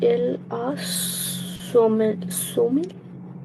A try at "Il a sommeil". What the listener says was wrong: We don't pronounce the last L. So sommeil. Il a sommeil.